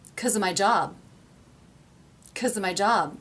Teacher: Because and of are so unstressed, so reduced and low in pitch, that the word job is able to really jump out of the sentence.